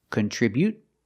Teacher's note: Just stop the air with the tongue and don't release the T.